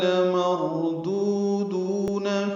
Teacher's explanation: لمردودون میں لام کو جلدی پڑھیں گے، را پر پڑھیں گے، دو دونوں واو مدہ ہیں، دو حرکات لمبا کریں گے